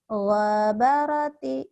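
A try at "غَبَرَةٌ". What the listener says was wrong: Nggak ada yang panjang.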